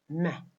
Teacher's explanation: Now, meh is voiced because the vocal cords are vibrating when it is produced. Meh is bilabial because it is produced when the lower lip and the upper lip are completely closed. We use both upper and lower lips when we produce meh. · We use both upper and lower lips when we produce meh. Meh is nasal because it is produced by allowing air to leave through the nose. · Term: voiced, bilabial, nasal, nasal consonant